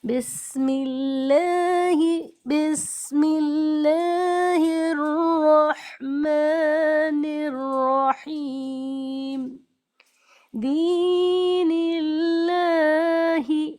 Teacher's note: اللہ کے لام سے پہلے زیر ہے اس لیے باریک، باریک کا مطلب آواز کے ساتھ۔